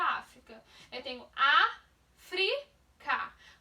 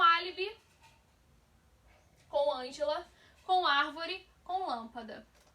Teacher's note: Por isso que África é acentuada, porque a sílaba mais forte é a antepenúltima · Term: proparoxítonas